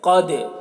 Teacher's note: انزلناہ فی لیلۃ القدر، قدر قاف کو پر پڑھیں گے اور دال میں قلقلہ کریں گے، دال کی آواز ٹکرائے گی